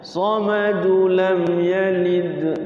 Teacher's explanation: kalau lam yalid dia sukun tuh baru mantul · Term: qalqalah sughra